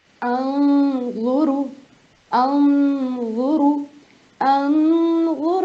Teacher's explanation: نون کو تھوڑی دیر کے لیے اخفا کر کے پڑھنا ہے, نون کو تھوڑی دیر چھپا کے پڑھنا ہے. کس طرح سے کرنا ہے, تھوڑی سی دیر غنہ کریں گے.